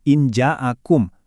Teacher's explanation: Di Ikhfa Aust ini tingkat penyamaran sama dengungnya itu seimbang banget. Benar-benar di tengah-tengah antara bunyi N dan ng. Coba perhatiin bentuk huruf jim dicontoh injaakum. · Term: samar pertengahan, ikhfa ausat